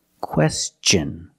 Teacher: when tion is after an s then it's pronounced differently it's pronounced with the CH sound the hard CH sound like chicken and change